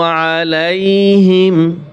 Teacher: আইন গলার ভিতরে চাপিয়ে বলতে হবে